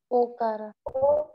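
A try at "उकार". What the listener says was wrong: Not Ukara. Ukara. Not Okara. Ukara.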